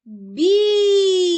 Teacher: білка наголошений перший склад